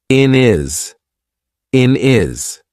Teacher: We've taken away that H completely and we've made it into one word. · instead of saying in his, we're probably going to say in is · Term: drop our H